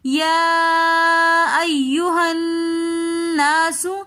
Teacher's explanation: ناسو میں الف مدہ بھی آ رہا ہے اس لیے نون مشدد کے بعد الف مدہ آ رہا ہے تو ہم اس کو ایک الف کی مقدار کھینچ کر پڑھیں گے